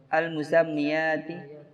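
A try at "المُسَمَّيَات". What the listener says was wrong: Al-musammiyat lagi. Al-musammiyat tapi ya ini enggak usah tasydid.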